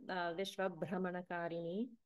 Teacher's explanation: make sure that you're pronouncing the Mahaprana bha in bhra. So this is not brahmana, which is a different word.